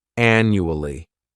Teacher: the third syllable has that schwa